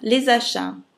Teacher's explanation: La S dell'articolo défini les. Si collega con la vocale di achat, ch sono particolari, sh, la t e la s, consonanti mute, nella regola deposito, non si pronunciano, per cui le togliamo. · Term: liaison